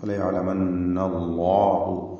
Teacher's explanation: അള്ളാഹു എന്ന ഇസ്മുൽ ജലാലയിൽ ലാമിനെ തഫ്ഹീം ചെയ്ത് ശബ്ദം ഹറക്കത്ത് പോലെ ശബ്ദം പെരുപ്പിച്ചുകൊണ്ട് ശബ്ദ ഭാരത്തോടുകൂടി ഉച്ചരിക്കണം. ഫലയാലമന്നല്ലാഹു ലാമിൻ്റെ മഖ്റജിൽ മാറ്റം വരാൻ പാടില്ല.